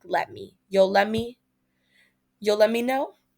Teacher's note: the T in let blends with the following M in me